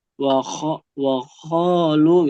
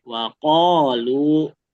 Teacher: Ada yang dia melafalkan qafnya terlalu dalam sampai mirip kho tadi.